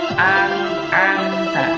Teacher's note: An'amta itu harus dibaca jelas karena di sana terdapat ada nun sukun bertemu dengan huruf ain. Huruf ain adalah salah satu dari huruf idhar.